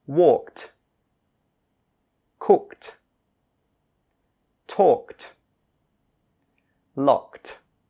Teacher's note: So just remember, when you have a K-E-D at the end of a word, it's pronounced as T. You still need to say the K sound, but the ED sound becomes a T. · When you have K-E-D at the end of a word, the ED sound is pronounced as a T.